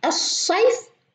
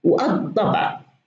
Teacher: حين تكون الكلمة مسبوقة بألف تعريف لا ننطق اللام ولكن نضاعف الحرف اللي بعدها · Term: الحرف الشمسي